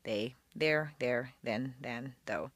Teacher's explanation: the voice th is like a d but instead of being in back of the teeth it's a quarter inch lower and forward between the teeth